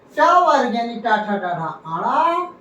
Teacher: टा वर्ग यानी टा, ठा, डा, ढा, आड़ा, रा और षटकोण, ये मूर्धा से बोले जाते हैं